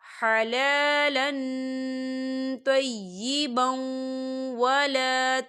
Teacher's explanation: حلالا طیبا، طیبا، یہاں دیکھیں با کے پر تنوین ہے اور تنوین کے بعد واو آ رہا ہے، تو یہاں پر ادغام ہو رہا ہے، کیونکہ واو جو ہے حروف یرملون کا ورڈ ہے، تو ہم یہاں ادغام کریں گے تھوڑا سا غننے کے ساتھ